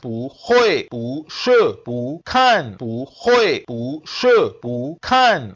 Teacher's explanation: when pu is followed by a syllable in the fourth tone, it changes into the second tone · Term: tone sandhi of pu